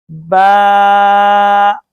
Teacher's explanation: बा दोनों होठों के अंदरूनी हिस्से के मिलने से बा अदा होता है · دونوں ہونٹوں کے اندرونی حصے کے ملنے سے با ادا ہوتا ہے